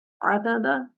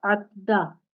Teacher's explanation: Rule number 2 apply करेंगे, इदगाम करेंगे, और वो कैसे होगा कि आप मिस्ले अव्वल की हरकत को ड्रॉप कर देंगे, उसको साकिन कर देंगे। अब देखिए मैंने उसे साकिन कर दिया।